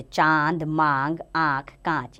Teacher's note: इसका उच्चारण करते समय हवा नाक और मुख दोनों से निकलती है। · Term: अनुनासिक